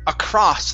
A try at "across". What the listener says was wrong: it's ah across okay one more time ah instead of o ah across